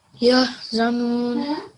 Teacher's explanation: this is a ha sakin. It's not a qalqala sound at all. So you just make a yah sound, okay?